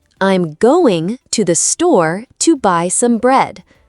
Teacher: We stress going store buy bread. The small words like to, 'the', and some are said more softly. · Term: sentence stress